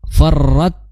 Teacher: Nah, kita sudah singgung tadi ya. Ta yang sukun maka hanya hames yang keluar